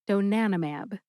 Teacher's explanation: Monoclonal antibody, of course, is abbreviated MAB, mab. Emphasize NAN. See if you can hear that syllable emphasized when I say it again.